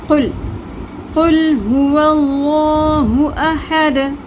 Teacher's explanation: لام پہ قلقلہ نہیں کرنا